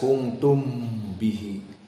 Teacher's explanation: Mimnya jangan dibaca jelas, kuntum bihi. Kuntum bihi ikhfa.